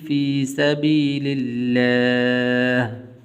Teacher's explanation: لفظ اللہ کو پر نہیں کریں گے اس لیے کہ اس سے پہلے زیر ہے